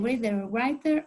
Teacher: a sound with the briefest contact between the tongue and the ridge of the teeth. And so this occurs between the vowels can be found in words like reader or writer or another sentence like this.